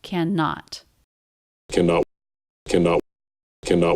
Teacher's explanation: in the first syllable you cannot do that can can can he's not reducing it he is doing the a vowel but it's still unstressed compared to the stressed syllable